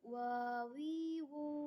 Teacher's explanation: hurufnya diucapkan dengan menggunakan dua bibir